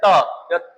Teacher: त में जीभ जो है दांत का अगला जो भाग है उसको स्पर्श करेगी, और स्पर्श कर जब दांत के ऊपर वाले दांत जो हैं उनके निचले भाग को स्पर्श करें तो वो ये जो है दांत को स्पर्श करने के कारण इसका नाम दिया गया है दांत से दंत।